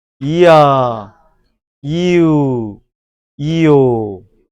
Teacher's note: 상향은 반모음이 앞에 있고 뒤에 단모음이 오고요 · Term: 상향 이중모음